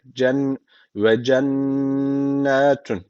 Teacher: Nunu mutlaka bir elif miktarı tutuyoruz